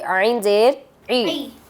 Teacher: عین حروف حلقی میں سے ہے اور یہ حلق کے درمیان سے ادا ہوتا ہے۔